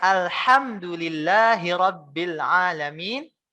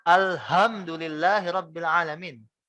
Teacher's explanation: dari hak kecil, hak yang tipis, menjadi hak yang besar